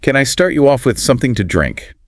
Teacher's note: with that upward inflection at the end because it's a yes no question